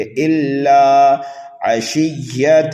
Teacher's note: اللہ کے لام کو ایک الف کے برابر کھینچ کر کے پڑھیں گے۔